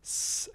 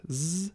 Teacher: the vibration of the vocal folds in the production of a speech sound the difference between s and z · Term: voicing